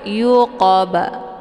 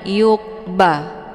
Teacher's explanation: Sembunyi pantulan itu bacaannya salah, tapi yuqaba, yuqaba. Jadi dipantulnya sedikit saja ataupun pantulan ringan, karena ini juga merupakan qalqalah sughra.